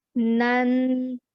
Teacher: We read the fatha and then we add a nasal sound. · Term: tanween